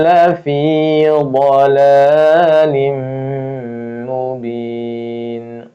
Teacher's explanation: Karena fathah ketemu lam dia idgham masuk tapi tidak menggunakan ghunah ya. Bila ghunah tidak tidak dengung. · makhrajnya sisi lidah kita kanan atau kiri menempel gigi graham atas ya. Gigi graham itu yang di kanan atau kiri ya. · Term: idgham bila ghunah